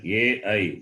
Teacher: the combination of two sounds guttural and palatal starts from the throat and ends with the palette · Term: diphthongs